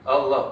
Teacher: lam tengah-tengah ni baca dua harakat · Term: mad asli